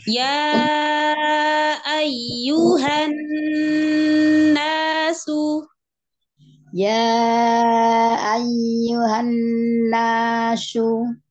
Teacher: Nanya jangan kelamaan, jangan nasu. Itu kepanjangan. Dua harokat saja.